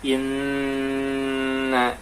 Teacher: ia tuh ada agak keluar dari hidung sini contohnya adalah Inna ini bunyi bergetar temen-temen jadi berdengung